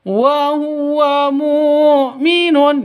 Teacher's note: Ini pendek semuanya jangan dibaca panjang.